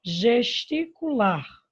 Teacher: o lar é a sílaba mais forte, a sílaba tônica